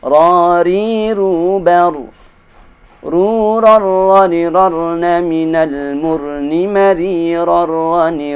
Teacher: Sama persis dengan huruf r roh Ada sedikit getaran